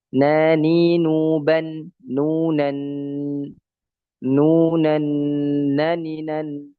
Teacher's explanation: tidak syiddah tidak rukhawah dia istifal dia infitah dan dia idlaq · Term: huruf nun